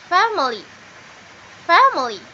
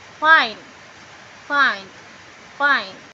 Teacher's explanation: suara labiodental ini diproduksi ketika bibir bagian bawah bertemu dengan gigi bagian atas dalam bahasa Inggris suara labiodental terdapat di konsonan Fe ve ve